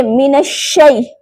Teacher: आगे मिनश्शै, या साकिन से पहले जबर है तो यहाँ या लीन होगी, यहाँ नरमी के साथ अदा करना है बगैर लंबा करे। अब यहाँ पर भी जो गलती मिनश्शै लंबा कर देते हैं, तो यहाँ ये मिस्टेक नहीं करनी।